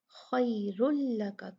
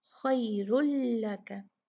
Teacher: तो यहाँ पर तनवीन का जो है रा रा जो पे जो तनवीन है उस पे नून साकिन जो हिडन होता है नून तनवीन में, उसका लाम से इदगाम होगा, बिल्कुल कंप्लीट इदगाम होगा, कोई गुन्ना कोई नून का ज़रा सा भी इसमें शायबा नहीं होगा, और ये इदगाम बिला गुन्ना होगा।